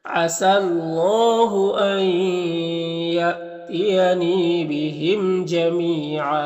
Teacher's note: اللہ کے لام سے پہلے سین کے اوپر زبر ہے تو اللہ کے لام کو پر پڑھیں گے